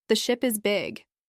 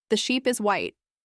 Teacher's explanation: Say ship and really focus on keeping the vowel short and relaxed. Then say sheep and stretch the vowel longer. You can exaggerate the sounds at first to help your mouth learn the difference.